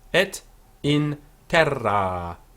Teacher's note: with a long A on terra